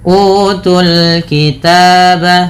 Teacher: Kemudian utul kitab, pada lafal utul kitab tu pada dasarnya panjang, tapi karena bertemu dengan huruf sukun maka alif waw ini dianggap tidak ada sehingga langsung ke huruf yang disukunkan, maka tu-nya menjadi pendek